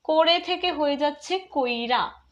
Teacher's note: শব্দ মধ্যস্থ ই বা উ থাকলে সেগুলোকে তার পূর্ববর্তী ব্যঞ্জনধ্বনির ঠিক পূর্বে উচ্চারণ করার ফলে যে রীতি হয় তাকে বলা হয় অপিনিহিতি।